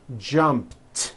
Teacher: so jump becomes jumped with a t sound at the end